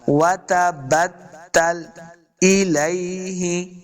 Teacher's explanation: لام ساکن ہے، لام کے اوپر جنبش حرکت نہیں دینی، یعنی لام کے اوپر قلقلہ نہیں کرنا